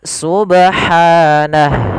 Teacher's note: Pada lafal ba di sini ada bacaan qalqalah, yaitu ba yang berharokat sukun. Itu kita namakan dengan qalqalah, dan di sini kita namakan qalqalah sugro.